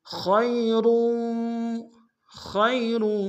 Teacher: خیر، خیر، خا کو یا کے سامنے لیں گے، یا لین بغیر کھینچے پڑیں گے